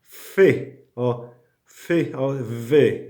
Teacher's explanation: labiodental it means that the sound is articulated with your lips and your teeth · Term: labiodental fricative